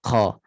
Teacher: Kemudian qaf, makhrajnya pangkal lidah sentuh pada langit lembut, belakang sedikit, berdekatan dengan anak tekak. Kuncinya pada anak tekak.